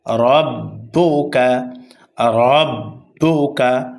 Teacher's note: র এর উপরে জবর অথবা পেশ আসলে রকে পুর করে অর্থাৎ মোটা করে পড়তে হয় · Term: র মোটা হবে